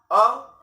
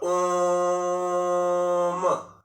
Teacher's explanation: जो मैंने ओम का उच्चारण किया, हर्ष स्वर का 3 गुना समय लगा। मान लो 1 सेकेंड अगर आ में लग रहा है तो 3 सेकेंड ओम के उच्चारण में लग रहा है। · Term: प्लुत स्वर